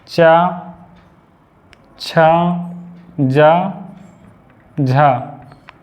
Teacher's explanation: चा, छा, जा और झा तुम्हारे क्या हैं, स्पर्श संघर्षी हैं